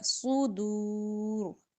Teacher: را بھی موٹا کریں گے، وقف کی صورت میں را کی زیر نہیں پڑی جا رہی، ساکن ہوگا